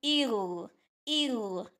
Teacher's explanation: حمزہ زیر کو باریک رکھنا، غین کو موٹا کرنا ہے، ٹھیک ہے؟ یہ موٹا حرف بھی ہے، اسی لیے گرین کلر کر دیا گیا ہے، یہ موٹے حروف ہے، غین اور خا دونوں ہی۔